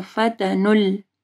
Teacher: یہ واو اور الف کو نہیں پڑھنا، نون جو ہے وہ لام کے ساتھ ملے گا